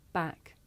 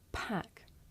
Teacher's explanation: With the voiceless sound, there's a big puff of air. You can feel it with your hands.